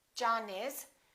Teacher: We have an N followed by an I. Therefore, we don't say John is. We link it and we say John is.